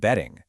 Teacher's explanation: In American English, that T often turns into a D sound.